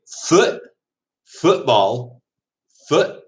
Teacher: they almost glottal stop the t